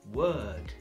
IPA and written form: wɜːd (Word)